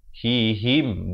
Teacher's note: Ha baris kasrah bunyi hi, bukan bunyi he.